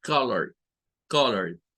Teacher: Entonces, es allí donde esto se vuelve una sola, porque realmente la E no suena, lo que suena es la D. Y por eso es que solo son dos sílabas.